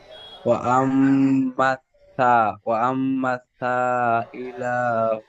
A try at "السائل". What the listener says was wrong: সাটি সিনের মতো, সিন সিটি মারার মতন হবে, আপনার সার মতো উচ্চারণ হয়ে যাচ্ছে। وأما السائل فلا تنهر।